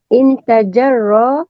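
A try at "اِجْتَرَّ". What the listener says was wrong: Kenapa ada nun? Tidak ada nun. Kita ada 6 alif ta, bukan alif nun.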